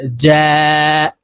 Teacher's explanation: জিম হরফ জিহ্বার মধ্যখান থেকে উচ্চারণ করব